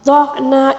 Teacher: آئین کے اوپر جو ساکن ہے اس کو قلقلے کے ساتھ بالکل نہیں پڑھنا ہے